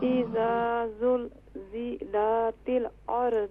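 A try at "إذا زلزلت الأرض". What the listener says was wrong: اذا زلزلت نہیں، اذا زلزلت زیادہ نہ توڑا کریں. دیکھیں جب توڑتی ہیں نا تو پھر محسوس ہوتا ہے آپ ساری جگہ پر قلقلہ کر رہی ہیں.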